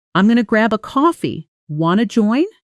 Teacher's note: going to becomes gonna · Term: connected speech